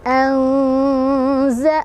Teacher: Karena ada nun sukun bertemu dengan salah satu huruf ikhfa yaitu zai. Cara bacanya disamarkan sambil berdengung. Karena ini adalah ausat, pertengahan, artinya zai-nya ini makhraj hurufnya tidak terlalu dekat, tidak juga terlalu jauh dengan nun. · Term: ikhfa ausat